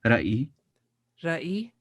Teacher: Tahitian starts with an R, but you're gonna kind of roll it like almost like a D.